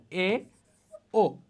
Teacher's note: এরপর আমি যাই উচ্চ মধ্য স্বরধ্বনি, অর্থাৎ কি উচ্চ এবং মধ্যের মাঝামাঝি। যেমন জিভ নিম্ন স্বরধ্বনির তুলনায় উপরে এবং উচ্চ স্বরধ্বনির তুলনায় নিচে থাকে